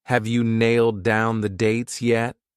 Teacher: a lot of native speakers reduce you to just a ya